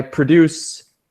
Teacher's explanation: when it's a verb, we make syllable 2 stronger, and when it's a noun, it's syllable 1.